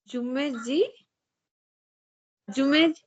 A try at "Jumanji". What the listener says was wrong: Uh, no. Actually, I think you have a slight problem with that j and z as well. The first word you have to pronounce like Zara. Zara.